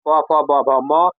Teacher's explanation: प फ ब भ म ये सब ओष्ठ से बोला जाएगा